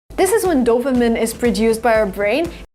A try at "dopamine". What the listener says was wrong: I cannot say this is when dopamine is produced by our brain. The word is not pronounced dopamine. It's pronounced dopamine. I have to use the long E sound like green beans. Dopamine. Not dopamine, not I like this is, but E like green beans. Dopamine.